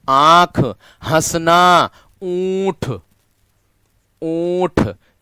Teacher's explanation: इसमें वायु मुख के साथ-साथ नाक से भी निकलती है। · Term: अनुनासिक